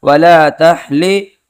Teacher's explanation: اس ہا کو گلے کے بیچ والے حصے سے ادا کریں گے